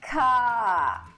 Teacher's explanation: Vou dar um exemplo. O inglês britânico, o R deles é bem fraco no final da palavra · Então, eles não vão falar car, como o americano força bastante o R. Car, o britânico vai repetir a última vogal